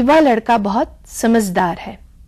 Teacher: यहां समझदार में झ की ध्वनि ज में परिवर्तित हो गई इसकी वजह यह है कि झ महाप्राण ध्वनि है और उसके